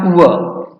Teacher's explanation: दंतोष्ठ जिनका उच्चारण दंत और ओठ से होता है अर्थात व। वर्णों के उच्चारण की रीति को प्रयत्न कहते हैं।